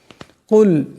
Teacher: বড় কাফ আছে আওয়াজটি গলা থেকে আনতে হবে